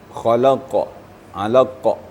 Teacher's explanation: getarannya di Pangkal lidah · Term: qalqala kubra